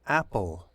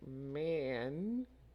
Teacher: with apple your mouth is going to be open much wider than with man man so the the mouth is not open quite as wide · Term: regular a